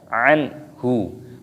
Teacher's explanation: nun sukun bertemu dengan huruf ha, hukumnya dibaca idhar halqi, dibaca jelas, tidak boleh berdengung.